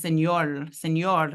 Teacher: The phonetics of it was señor, señor, lateralizing the R to an L